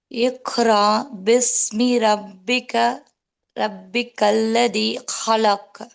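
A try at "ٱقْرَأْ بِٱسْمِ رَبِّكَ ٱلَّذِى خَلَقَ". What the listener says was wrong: கல்கலா மட்டும் மிஸ்ஸிங். ரெண்டு காஃப்லயும் கல்கலா missing. கல்கலாவோட read பண்ணுங்க.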